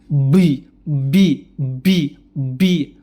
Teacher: Jadi kenapa bisa terjadi karena dia terlalu menekan huruf ba terlalu menutup rapat huruf ba bibirnya bi bi bi bi akhirnya terjadilah letupan udara yang keluar Billa